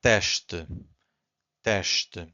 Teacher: So again, S before a consonant, it's a sh.